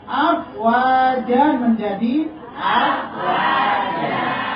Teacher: Kalau fathatain akan menjadi panjang, bukan menjadi sukun.